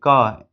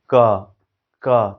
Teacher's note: हवा को कंठ से रोके हैं, यानी कंठ से ये उच्चारित ध्वनि है, तो इसको बोलेंगे कि ये व्हीलर है, वेलर है, ठीक है।